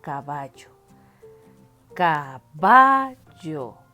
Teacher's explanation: la que suena más fuerte es va entonces esta es mi sílaba tónica